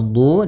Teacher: du di sini ada mad thabi'i panjangnya dua harakat yaitu dommah bertemu wau